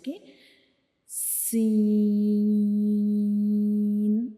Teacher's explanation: जब हम सीन को पढ़ते हैं तो हम इसको तीन सेकंड्स के लिए लंबा करते हैं।